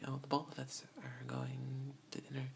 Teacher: we like to put an l in the word both